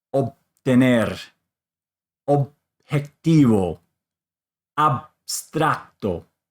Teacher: you're just going to bring your lips together and not have any explosion. So they will come together because it is followed by a consonant.